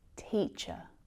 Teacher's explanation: This is our relaxed, lazy schwa sound. We really need to relax our jaw.